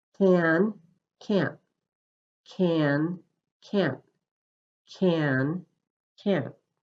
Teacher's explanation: There is no vibration, so the T at the end of the word can't cuts off the sound of your voice. This makes the time for the A and N sounds shorter than in can.